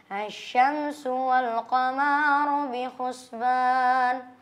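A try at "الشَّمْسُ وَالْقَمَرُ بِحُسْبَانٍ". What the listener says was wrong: Bentar, ini koreksi. Tadi baca asy-syamsu wal qamaru, tapi harus dihilangin alifnya.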